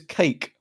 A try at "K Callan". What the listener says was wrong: K, just the letter K. I did not say Cake Callan. K Callan. K Callan. Not Cake Allen.